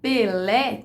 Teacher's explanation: essa pronúncia Pelé, com uma vogal fechada depois do P, é típica dessa região sudestina